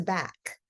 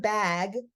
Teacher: K is voiceless and G is voiced and they're both produced in the same place right here in the throat it's a Velar sound a back